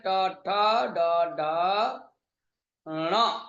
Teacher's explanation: तो ट ठ ड ढ ण मूर्धा से उच्चारण होने के कारण मूर्धन्य वर्ण है।